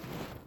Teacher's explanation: देखिए उच्चारण करके देखिए प जो होठ है हमारा, होठों से इनका उच्चारण निकल के आ रहा है। प होठ पे जाकर टच हो रहा है तब हमारा उच्चारण निकल के आ रहा है।